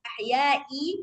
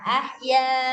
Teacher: kalau hamzah dengan tanwin bawah, dia nggak perlu dibaca panjang. Ahyai, nggak bisa dibaca begitu ya, dia mati jadinya.